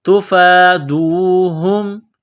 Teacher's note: فا کے اوپر کڑا زبر ہے، ایک الف کے لمٹ میں کھینچنا ہے